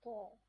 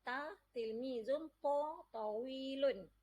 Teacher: ta ni dia tebal sikit bunyi dia. Kita kena buka mulut kita besar-besar sikit.